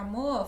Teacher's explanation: aí apaga o R final